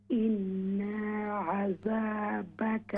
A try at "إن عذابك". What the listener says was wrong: یہ جو ان ہے اس کو ہم نے لمبا نہیں کرنا ان عذابك